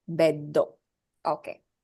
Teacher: So bed is beddo. The two sounds be and do. The second one is stressed.